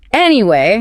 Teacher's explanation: When a native speaker uses anyway to return to a topic, they usually take a small breath, sigh slightly, and drop the pitch of their voice on the first syllable. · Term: tone drop